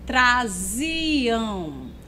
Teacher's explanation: na primeira sílaba, a vogal A, ela já tem uma pronúncia mais aberta